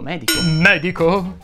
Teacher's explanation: Si pronuncia con la E aperta, così come molte altre parole sdrucciole